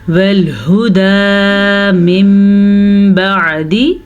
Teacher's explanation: नून साकिन के बाद बा आ गया है तो हम नून साकिन को मीम में बदल देंगे, इसे इक़लाब कहते हैं।